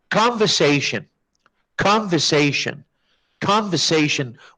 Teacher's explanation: with short O and the schwa after the V sound. And there is no R sound, yani al-R. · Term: British English